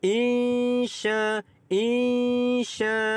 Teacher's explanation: Nun mati bertemu dengan huruf shin. Didengungkan dua harakat kerana ikhfa hakiki.